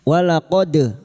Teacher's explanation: huruf dal yang mati asli di tengah kalimat qalqalah sugro. Jangan lupa dipantulkan